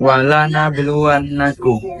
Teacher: Pertama, qalqalah sugro karena huruf sukun berada di tengah kalimat. Cara bacanya dipantulkan ringan.